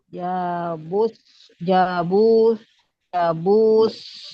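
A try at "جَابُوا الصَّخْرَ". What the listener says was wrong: Bunya enggak panjang, warna oranye. Warna oranye tidak terbaca. Bukan jabus, tapi jabus. Soh, langsung lebur ke sod.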